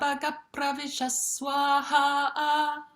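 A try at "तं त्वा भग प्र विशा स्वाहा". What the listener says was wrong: The last three, the swaras are off. let's just do the three last. Tantwa bhagap pravishanis swaha. Tantwa bhagap pravishanis swaha.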